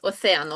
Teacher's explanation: Бачите на е наголос